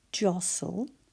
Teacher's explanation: And then S-T-L-E. And when we say jostle, we can't actually hear that T, but it's there.